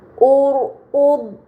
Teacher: ra sukun, sebelumnya ada harokat dhammah ini ra sukunnya harus dibaca secara tebal